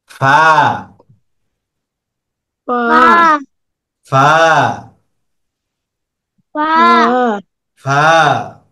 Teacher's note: ফাটা হলো উপরের দুইটা দাঁত নিচের দাঁত নিচের ঠোঁটের পেটের সাথে লাগবে। নিচের ঠোঁটের পেট সামনের উপরের দুই দাঁতের আগার সঙ্গে লাগিয়ে, উপরের যে দুইটা দাঁত আছে এটা আমরা নিচের পেটের সাথে লাগাবো এভাবে।